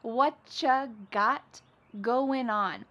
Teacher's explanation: Whatcha is what plus you becomes cha.